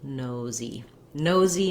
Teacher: Just hold your no long and add your Z as your second syllable